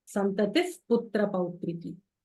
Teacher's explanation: Visarga followed by pa will give you an F kind of a sound.